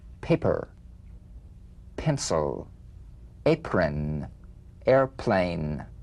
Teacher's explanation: p is played with a light springing apart of the lips just like for the bee on the springing away feel a bee in a whisper without any puff of air